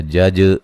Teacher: جیم کو ہلا کے پڑھنا، قلقلہ ہے